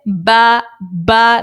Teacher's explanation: جب دونوں ہونٹوں کا تر والا حصہ، جو گیلا والا حصہ ہے دونوں ہونٹوں کا، وہ آپس میں ملتے ہیں تو با ادا ہوتا ہے